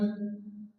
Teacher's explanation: তানবির বা নুন সাকিনকে মিম দ্বারা পরিবর্তন করে পড়তে হবে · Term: ইকলাব